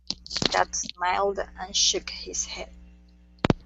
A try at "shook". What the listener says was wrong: Dad smiled and shook his head. Okay, so make sure to go to a K sound instead of a T. So you're saying shook his head instead of shut. It's shook.